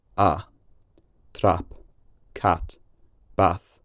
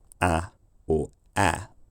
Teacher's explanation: the short vowel in trap and Cat and bath is probably low Central